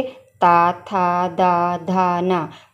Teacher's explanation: हमारी जो जीभ है वो हमारे दांतों को छू रही है, तो इसलिए इनका जो उच्चारण स्थान होगा दंत होगा